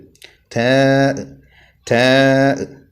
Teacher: മുരട് എന്നാണ് അതിന്റെ മഹ്റജ് പറയാറുള്ളത് മുരട് എന്ന് പറയുമ്പോൾ പല്ലിൽ ഒരിക്കലും തട്ടരുത് ഊനിന്റെ അഗ്രഭാഗത്ത് നാവ് വെച്ചുകൊണ്ടാണ് നാവിന്റെ തല വെച്ചുകൊണ്ടാണ് ഉച്ചരിക്കേണ്ടത്